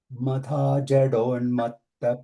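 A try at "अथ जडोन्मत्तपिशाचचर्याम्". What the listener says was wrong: Adha, we should start, not madha. Adha.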